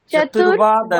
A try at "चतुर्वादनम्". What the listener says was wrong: নং না, নম, মকার উচ্চারণ করবেন, চতুর্বাদনম, চতুর্বাদনম।